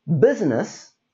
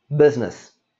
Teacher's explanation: there is the middle i that we don't say